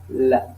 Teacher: Latéral, comme L, l'air passe sur les côtes de la langue